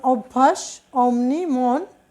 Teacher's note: অনেকটা অটা ওকারের মতো উচ্চারিত হয়েছে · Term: সংবৃত